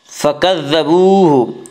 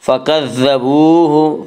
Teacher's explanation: فکذبوہ، واو مدہ وہ واو جو ساکن اس سے پہلے پیش ہو، واو مدہ کو ایک الف کے برابر کھینچ کر پڑھیں گے۔